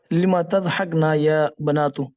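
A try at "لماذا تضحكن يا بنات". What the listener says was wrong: Good.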